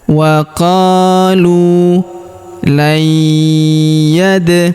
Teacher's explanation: Huruf nun sukun bertemu huruf ya berharokat tasydid, maka nun sukunnya melebur ke huruf ya yang berharokat tasydid. Kita tahan dan tekan serta kita dengungkan 2 sampai 3 harokat.